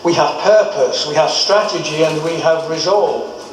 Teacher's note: the first two items are spoken with a rising intonation